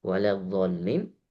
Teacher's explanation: Yang mana huruf tebal di sini hanya satu huruf, huruf do saja. Yang lain tipis. La tipis, wa tipis, kemudian li itu juga tipis.